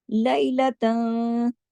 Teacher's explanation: आगे सा की वजह से इख्फा हकीकी गुन्ना कामिला। सुम्मा मीम पे तशदीद है, बड़ा गुन्ना होगा।